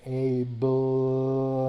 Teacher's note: the sound between the B and the L, you have to actually pronounce. You have to actually use the vocal cords, in which case you're using the schwa